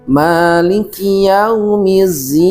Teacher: pada huruf dal kadang berubah menjadi huruf za